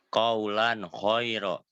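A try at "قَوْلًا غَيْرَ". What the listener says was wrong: Ya, aghinnya dikelatanin ya. Kemudian ikhfa. Nah, ikhfa ini agak samar ya bacanya.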